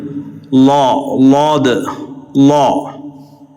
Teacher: നാവിൻ്റെ അരു അതുപോലെ മേലെ അണപ്പല്ലുകളുടെ ഭിത്തിയാണ്.